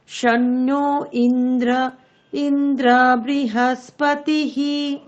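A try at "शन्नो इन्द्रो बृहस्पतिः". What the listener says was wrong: ইন্দ্র নেই ম্যাডাম ইন্দ্র ওকার আছে তাহলে শন্ন ইন্দ্র ওকার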